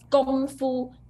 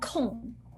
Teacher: Gong, not Kong. Gong is start from G. Gong Fu, first tone.